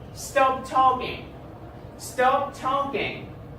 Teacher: Okay? You see, when I say stop, my pitch goes higher. But then, the last syllable of talking goes low. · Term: Falling intonation